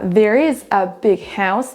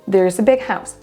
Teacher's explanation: On prononcera à peine en fait le verbe être et la préposition a. On ne dit pas there is a big house, mais there's a big house.